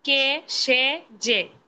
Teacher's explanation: একাক্ষর সর্বনাম পদের এ সংবৃত হয়